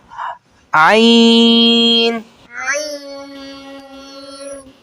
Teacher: हलक के दरमियानी हिस्से से आइन आइन और हा और हा अदा होते हैं